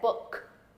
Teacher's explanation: without the H this is uh like in book and remember a k at the end does not sound out like I said book this is B book little bit different